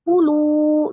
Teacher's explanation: lu-nya mad tabi'i waw sukun sebelumnya dhamma di huruf lam, lu dibaca 2 harakat